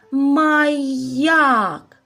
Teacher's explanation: Так, наголос припадає на другий склад.